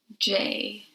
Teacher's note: you can feel the vibration because it is a voiced sound